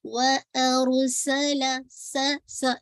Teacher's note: سا یہ whistling sound آنی چاہیے